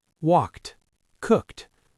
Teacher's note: And cook ends in a K sound too, so we say cooked. The ed is almost invisible. It's just a little T at the end. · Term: t sound